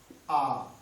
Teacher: जीभ के मध्य भाग से आ बोला जाता है